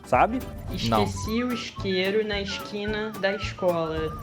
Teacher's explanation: o culpado pelo S com som de s h foram os portugueses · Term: chiado